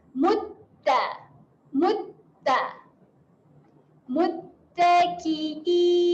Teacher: Hati-hati pada huruf ta kerana adanya tanda sabdu. Tahan dekat makhraj huruf ta.